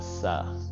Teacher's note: Russians often would say with a Russian accent, a sa instead of a tha